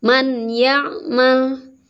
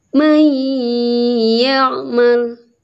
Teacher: Tapi harus dileburkan, nun matinya seolah-olah tidak ada, langsung ke huruf ya dan dengan dengung. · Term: idgham bi gunnah